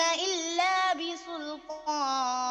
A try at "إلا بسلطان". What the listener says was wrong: طيب رقق رقق السين. إلا بسلطان، سو